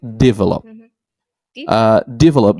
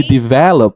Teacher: so it's stressed in the second syllable